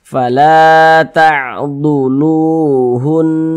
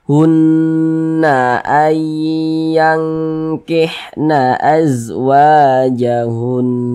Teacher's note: Huruf nun bertasydid hukumnya adalah gunnah musyaddadah lagi. Cara bacanya digunnahkan atau didengungkan. Jadi suaranya kita tahan, kita panjangkan sejenak.